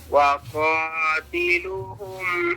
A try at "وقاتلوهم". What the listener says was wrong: ये क्या कर दिया वक़ातिलू पढ़ दिया है गलती नहीं समझ आई वाओ है लंबा करो वक़ातिलूहुम